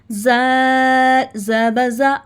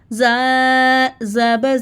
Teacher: अब जाल और सा में ज़ुबान की जो नोक है ऊपर दो दांतों के दरमियान लगाकर थोड़ी सी बाहर निकालें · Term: सॉफ्ट